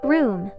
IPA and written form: bru:m (Broom)